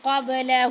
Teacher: اب با ساکن ہے تو یہاں پہ قلقلہ کریں گے